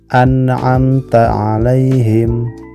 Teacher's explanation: Cara membacanya adalah harus jelas bunyi N-nya, karena menghadapi huruf ain, di mana ain termasuk huruf idhar. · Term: izhar